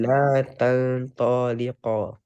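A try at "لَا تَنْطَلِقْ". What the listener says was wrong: Good. Next one.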